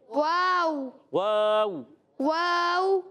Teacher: وَکُلُوا میں واو پر زبر ہے، بغیر کھینچے ادا کریں گے. واو ہونٹوں کی گولائی سے واو ادا ہوتا ہے